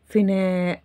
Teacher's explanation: alif here is a long vowel sound like the sound a in English